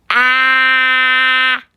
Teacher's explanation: the short vowel sound is ah your mouth is open wide just like you're biting into an apple ah say the sound